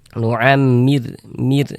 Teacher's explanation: Huruf rasukun sebelumnya harokat kasroh, maka huruf rasukunnya dibaca tipis, dibaca tarkik.